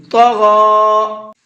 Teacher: طا کو بھی اور غین کو بھی دونوں کو منہ بھر کے پڑھیں گے